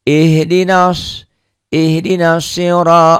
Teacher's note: Ro-nya dibaca tebal, tabkhim karena baris di atas. Ro-nya juga panjang.